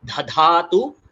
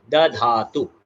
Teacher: और लास्ट में जो अक्षर आता है द धातु, ये पहला अल्प प्राण फिर महाप्राण, ये द अल्प प्राण फिर ध महाप्राण, तो द धातु, ददातु, धधातु नहीं, उसको मिक्स नहीं करना है, पहले अल्प प्राण फिर महाप्राण, द धातु।